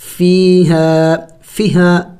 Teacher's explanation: فیہا فا یا زیر فی ہا الف زبر ہا فیہا فیہا فیہا نہیں پڑھیں گے، یہ غلط ہے، یا مدہ ہے، کھینچیں گے ایک الف کے مقدار